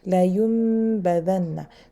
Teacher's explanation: No, you don't mix the two sound. So you go directly, closing the lips and staying there for at least 3 counts. · So I place my lips as if there's a meme inside, instead of noon. So la yumbadanna, and I take my time. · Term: iqlab